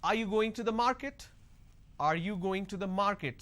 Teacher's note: So when I say, are you going to the market, there is a rising tone.